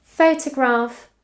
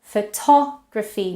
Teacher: now to is stressed and it has a full vowel, whereas it used to be unstressed and had a schwa